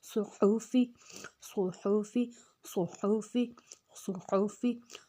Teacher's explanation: اب صاد کو موٹا رکھنا ہے، اگر ہم صاد کو موٹا نہیں رکھیں گے تو وہ سین کی آواز آ جائے گی جو کہ سیٹی والا حروف ہے۔ صاد کو موٹا رکھنا ہے، تھوڑی سی سیٹی آئے گی لیکن لفظ موٹا ہوگا۔ حا کو حروف ہلکی ہے، الگ سے نکالنا ہے، صحوفی، صحوفی، صحوفی، صحوفی۔